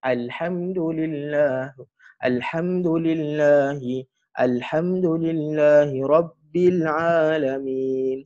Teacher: Huruf lam kat mana tempat keluar dia? Tepi lidah dengan gusi atas tu.